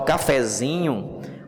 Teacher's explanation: Mas quando eu boto cafezinho, o zi já é a sílaba que mudou para a tonicidade. E ela passa a ser paroxítona terminada com O.